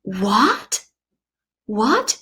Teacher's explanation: it's a rising tone what that is a second toe in Chinese